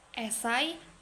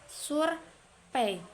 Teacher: Diftong E adalah gabungan dua huruf vokal yaitu E dan I yang dibaca dalam suatu tarikan napas